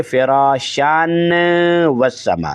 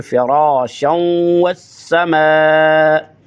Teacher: فراشان کو جب نون پڑھیں گے، نون کو واؤ میں ادغام کر دیں گے، فراشاں شم بن جائے گا، نہ کہ فراشان والسما نہیں، بلکہ فراشاں والسماء۔